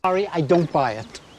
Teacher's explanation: En este caso encontramos dos vocales con un sonido similar. En este caso es el sonido I. Por eso podemos unirlas.